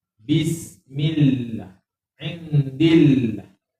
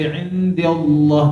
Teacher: Kerana kalimah Allah sebelum dia baris bawah dibaca ni nipis.